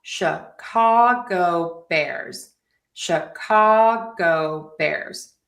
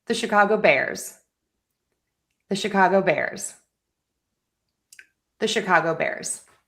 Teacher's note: And then bears is one syllable. So that gets the stress. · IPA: /ʃɪˈkɑːɡoʊ berz/